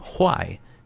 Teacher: I think with fourth tone falling tone ha is like rotten